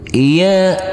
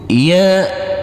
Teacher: Karena kita wakafkan di sini, kita berhenti di sini, maka huruf jim wajib kita pantulkan karena ini adalah bacaan qalqalah.